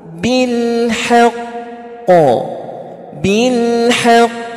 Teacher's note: cara memantulkannya jangan langsung. Kenapa? Karena dia bertasydid. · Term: huruf qalqalah